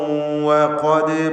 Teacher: ശേഷം ദാൽ തർക്കീഖിൻ്റെ അക്ഷരമാണ്. ദാലിന് സുക്കൂൻ ഖൽഖല സുഗ്റ നൽകി ദാലിൻ്റെ സുക്കൂൻ ഹറക്കത്ത് പോലെ ചലിപ്പിക്കുക.